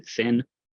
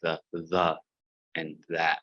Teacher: a voiceless th, voiceless dental fricative, like the th in thin, not like the and that. Don't use your voice box